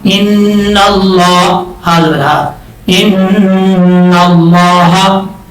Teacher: نون کے اوپر شد ہے غنہ کریں گے ایک الف کی مقدار. لفظ اللہ سے پہلے زبر ہے, اس کو اوپر پڑھا جائے گا.